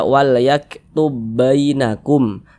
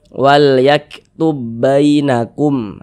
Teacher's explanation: Jadi huruf ba-nya ini melebur masuk ke huruf ba yang di sini. Jadi huruf ba yang sukun ini dia ada, tapi seolah-olah tidak ada begitu. Karena dia masuk melebur ke huruf ba yang berharokat fathah ini. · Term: idgham